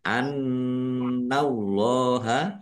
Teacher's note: Allahnya dibaca tebal karena harakat di depannya fathah. Lam fathah berdiri mad thobi'i panjang dua harakat. · Nun tasdid dibaca ghunah atau mendengung. Ditahan ya. Harus ditahan biar tampak mendengung.